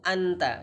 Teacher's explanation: Min Aina Anta jadi tidak perlu kita dengungkan